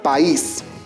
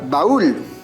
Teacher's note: la mayor fuerza de voz recae sobre la vocal débil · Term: hiato